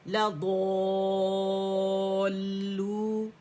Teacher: अच्छा, ऐसा होता है यूजुअली कि जैसे दौद मोटा लेटर है ना, तो हम लाम भी मोटा कर लेते हैं, लाम मोटा नहीं करना, ठीक है। सिर्फ दौद ही को मोटा रखना है, अलिफ तो मोटा होगा,